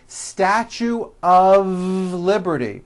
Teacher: Even though the word of is spelled with an F, we pronounce the word of with a voiced V